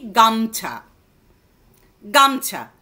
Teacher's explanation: যেমন দেখো, গা মো ছা, তিনটে, গা মো ছা হয়ে যাচ্ছে কি গামছা, গামছা। মধ্য স্বরধ্বনি লোপ, এটাকে মধ্য স্বরধ্বনি লোপও আমরা বলবো, গামোছা থেকে গামছা